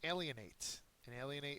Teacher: It has the first syllable accented.